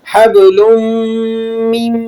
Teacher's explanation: فی جیدہا حبل، با پہ قلقلہ ہوگا، قلقلہ صغیرہ اسے کہا جاتا ہے۔ حبل من، لام کے اوپر تنوین لگی ہوئی ہے اور اس کے بعد میم ہے حروف یرملون میں سے، یہاں پر آپ ادغام کر لیں گے، ادغام بالغنہ کہا جاتا ہے اسے۔